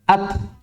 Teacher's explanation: orang-orang Arab ketika mengucapkan huruf-huruf syiddah yang sukun ini, mereka tidak berhenti sampai di situ. Tapi akan langsung melepas makhrajnya.